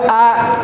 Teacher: உதடு எதுவும் சேர்க்காம இருக்கும்போது அ காலி வாயிலிருந்து வருது